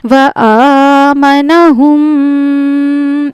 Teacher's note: یہاں پہ بھی میم ساکن کا ادغام ہوگا ملا کر غنہ کریں گے.